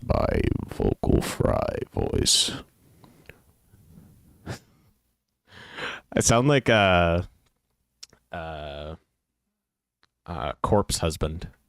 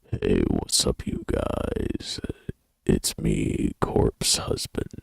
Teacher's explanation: vocal fry is the lowest register of your voice characterized by its deep creaky breathy sound